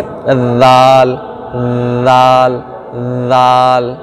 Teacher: उसके बाद इससे ज़बान को ऊपर के दांत, ये जो किनारे के ऊपर के दांत है सामने के, इस पे मिलाना है और पढ़ना है ज़ाल ज़ाल ज़ाल, ठीक है। ऊपर के दांतों से ये ज़बान का किनारा बाहर निकाल के मिलाना है, बस ज़ाल अदा हो जाएगा।